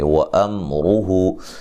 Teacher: میم ساکن کا یہاں اظہار ہے، غنہ نہیں کریں گے ، را کو موٹا ادا کریں گے، ہو